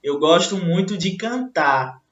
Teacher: quando ela disse cantar, o R não foi ouvido por nós